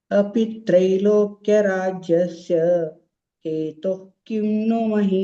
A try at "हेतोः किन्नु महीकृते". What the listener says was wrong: Hetoh kimnu. To is also dirgha. Hetoh kimnu.